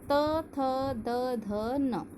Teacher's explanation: त वर्ग हम ये दांत से बोलते हैं, इसलिए इसे दंतस्थ व्यंजन कहते हैं